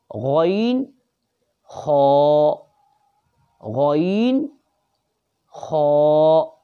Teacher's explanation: حلق کے اوپر والے حصے سے 2 حرف ادا ہوتے ہیں